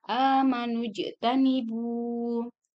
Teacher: di sini ada jim yang disukunkan, maka hukum membacanya diqalqalkan. Amanujtanibu.